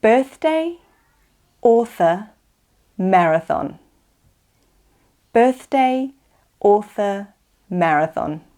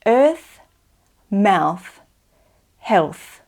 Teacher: Okay, let's practice the unvoiced TH. Remember, that's the one that is just a puff of air.